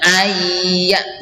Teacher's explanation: Ada nun mati bertemu dengan ya, ini juga idgham bi gunnah